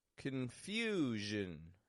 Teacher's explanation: three syllable word the stresses in the second syllable the vowel gets stretched out in there a little bit longer and then the Jin quick and quiet confusion so here's some